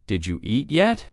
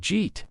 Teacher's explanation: For example, when someone says, "Did you eat yet?" in casual speech, it often sounds like Jeet, the words blend together so much that a learner might think it is a completely different phrase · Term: blended speech